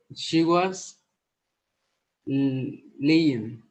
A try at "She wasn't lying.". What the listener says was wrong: Ojo con esa pronunciación porque no es was, es wasn't. Miren que aquí en la negación lo que cambia es que el verbo to be adquiere su forma negativa en pasado. El resto se deja quieto. She wasn't lying.